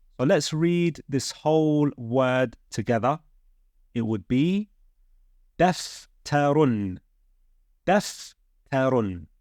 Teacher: Meaning the tanween will only come on the final letter of a word, and it is pronounced with a N sound. So here, we would make the dhamma sound, the U sound, followed with an N sound.